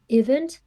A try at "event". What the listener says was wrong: Event instead of event, so just a small problem with the wrong stress.